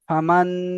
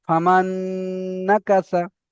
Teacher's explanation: নুনটা দেখেন, নুনের উপরে সাকিন এসেছে, নুন সাকিন হবে, নুন সাকিনের পরে ঈদগামে ইয়ার মালুনের 6টি অক্ষরের মধ্যে থেকে নুন এসেছে, তাই ঈদগামে নাকিস হবে। নুনকে নুনের সাথে মিলিয়ে এক আলিফ পরিমাণ গুণনা সহ পড়তে হবে।